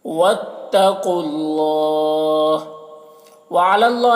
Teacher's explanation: यहाँ पर अल्लाह को पुर पढ़ेंगे। खड़ा ज़बर है, एक अलिफ के बराबर खींचेंगे। फल्यतवक्कलिल यहाँ पर लाम साकिन हर्फ है तो पीछे वाले मुतहरिक हर्फ लाम से मिलकर पढ़ा जाएगा।